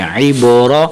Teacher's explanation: با کو کلکلا دیں را کو موٹا کریں